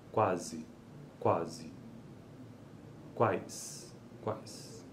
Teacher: uma sequência de oclusiva velar labial que pode ser seguida por uma vogal ou por um ditongo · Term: consoantes complexas